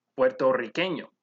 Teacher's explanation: since there's a double r you would roll this sound